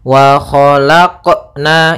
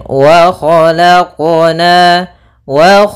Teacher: seperti huruf hamzah misalkan wa khalaqna itu ada tambahan Hamzah harusnya dalam pelafalan qalqalahnya tidak ada tambahan Hamzah ataupun saktah ya Akan tetapi dia langsung saja mengalir wq wq nah seperti